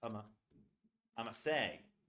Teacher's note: It's I'm going to, but so reduced that you can barely hear it. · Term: levels of reduction